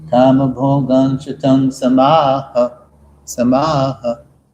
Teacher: So it's actually 2 Sanskrit lines, but it's transliterated as 4 half lines. So you only need to aspirate, punch the Visarga H at the end of the 2nd and the 4th lines, because that's the end of the 1st and the 2nd Devanagari.